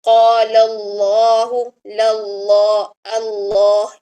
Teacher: یہاں پر دیکھیں، اس میں جلالہ سے پہلے جو ہے وہ لام کے اوپر، قالا کے لام کے اوپر زبر ہے اور آگے اس میں جلالہ ہے، یعنی اس میں جلالہ سے پہلے زبر آ گئی ہے تو یہاں پر اس میں جلالہ کو موٹا پڑھا جائے گا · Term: جلالہ کا لام